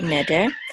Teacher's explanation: And the accent is on the first syllable here, neder.